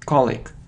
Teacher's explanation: So the stress is on the first syllable and we have the sound E